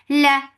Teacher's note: Lam will get sifa of tawassut, and tawassut is medium flow of sound. La for fatha upon jaws.